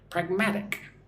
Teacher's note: the emphasis on the second syllable, the stress on the second syllable, mag.